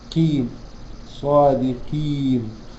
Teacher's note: القاف دي من حروف الايه؟ التفخيم، ولكن أقل درجات التفخيم فتتنطق قيم